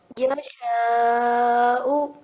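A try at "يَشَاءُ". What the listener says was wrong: So longer. If you could make the sha much longer. Okay, so just for future reference, it has to be very long, longer than you think it has to be.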